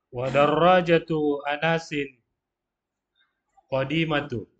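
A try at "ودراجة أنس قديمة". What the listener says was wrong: Tun tanwin ya. Wa darajatu Anasin qadimatun. Wa darajatu Anasin qadimatun. qadimatun.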